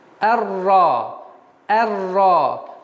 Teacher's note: с фатха переходим сразу на букву Ра, так как буква Ра является солнечным звуком и твердый звук